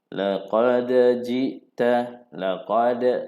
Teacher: ini adalah qalqalah sughra. Lantunannya tidak besar, kecil saja.